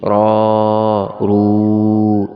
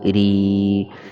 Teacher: را کو زبر اور پیش کی حالت میں موٹا پڑھیں گے اور زیر کی حالت میں باریک